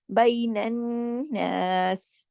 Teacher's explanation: بین الناس، یہاں پہ غنہ ہے. اگر ہم یہاں رکے ہیں تو ہم نے سین کی حرکت کو روک دیا. بین الناس، اور کلکلا نہیں ہے، جھٹکا نہیں ہے.